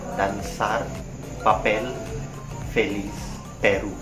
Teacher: the stress will be on the final syllable instead of the penultimate or the second to the last syllable.